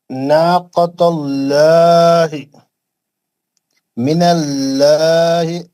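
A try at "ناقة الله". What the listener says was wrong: लो ला ही नहीं, लो लो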